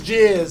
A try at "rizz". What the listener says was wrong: there's an R in it.